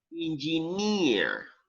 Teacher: Engineer, actually you have the stress on the last syllable, at the end. Okay. Engineer.